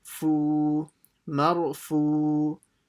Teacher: Then the fa will join to the waw, will be stretched by the waw sakin